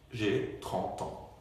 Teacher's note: আমি চন্দ্রবিন্দু নিয়ে লিখবো কারণ সাউন্ড একটু নাসাল হয়ে গেছে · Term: নাসাল সাউন্ড